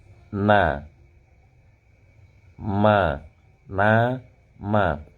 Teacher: Ada sensasi dengungan, ada sensasi gunnahnya di khayshum pada saat mengucapkan nun dan mim yang hidup.